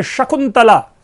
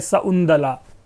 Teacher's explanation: आपको याद हो, शब्द है शकुंतला, वो श नहीं कैरी करता, वो बन जा रहा है सउंदला, स उ, और जो त है वो द में कन्वर्ट हो रहा है, सउंदला। इसी प्रकार इसमें जो संयुक्त व्यंजन है, वो संयुक्त व्यंजन का समीकरण हो जाता है।